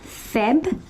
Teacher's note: when you say February, you're actually forgetting the R